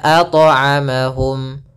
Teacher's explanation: ini tambahan hamzah salah. Harusnya mengalir saja